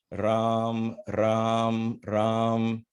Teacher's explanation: Ra has the very fact that you're vibrating in touching the roof of your mouth